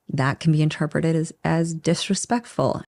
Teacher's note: as disrespectful that can be can is reduced to can again the T in that is also almost dropped so she just goes for the next sound